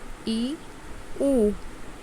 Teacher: संवृत का अर्थ होता है कम खुलना, अर्थात स्वरों के उच्चारण में मुंह कम खुलता है, उन्हें संवृत स्वर कहते हैं।